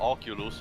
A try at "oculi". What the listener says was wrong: Technically, they're pronounced oculi with an I. No, they're oculi in the English version as well.